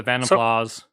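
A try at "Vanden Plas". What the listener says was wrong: you don't say the S it's French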